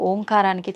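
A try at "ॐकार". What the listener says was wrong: అది ఓంకారం కాదు, ఔంకారం. మీరు మనం పలకడమే దాన్ని తప్పు పలుకుతున్నాం. మనం మాట్లాడుతున్న ప్రతి మాటల్లో ఎక్కడో ఒక చోట అకారము ఉకారము మకారము ఉంటాయి. అకార ఉకార మకార అర్ధమాత్ర ఇది ఓంకార. అర్ధమాత్ర మకారం అన్నాడు. ప్లస్ ఆ. అర్ధమాత్ర అంటే ఔం అని ఉచ్చరించినప్పుడు అకారము ఉకారము రెండూ పలకబడి మూకారం దీర్ఘమవుతుంది.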